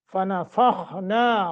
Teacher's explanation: خا کو موٹا، نا کو 1 الف کے برابر مد ہے